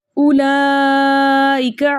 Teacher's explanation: कलमे में हुरूफ मद्दा में से अलिफ मद्दा के कायम मकाम खड़ा ज़बर मौजूद है और खड़े ज़बर के फ़ौरन बाद हमज़तुल क़त आ रहा है, इसलिए यहाँ पर मद बन रही है मद मुतसिल वाजिब